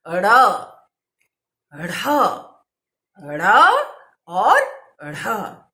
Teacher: हमारी वर्णमाला में 2 उत्क्षिप्त व्यंजन है, उत्क्षिप्त व्यंजन। इन व्यंजनों के उच्चारण में हमारी जो जिह्वा है वो मूर्धा से टकराकर झटके से नीचे आती है